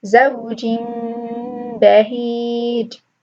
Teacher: You're going to replace the noon sound of the tanween with a meem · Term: iqlab